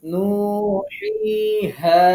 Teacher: হা, কণ্ঠনালীর শুরু থেকে।